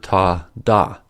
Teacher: The tip of the tongue blocks the air for ta, da.